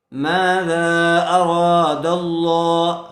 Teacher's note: میم الف زبر ما ذال الف مد زبر ذا ما ذا حمزہ زبر را الف زبر را را کو پر کریں گے. را کے اوپر زبر ہے زبر والے حرف کے بعد الف مدہ آیا ہوا ہے تھوڑا کھینچ کر پڑھیں گے.